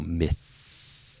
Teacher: that th sound is a voiceless sound so myth there's no vibration on this I'm not getting any vibration in my vocal cords so that's